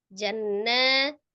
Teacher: Jannah nun sukun, nun tasdid atau nun musaddada wajib gunnah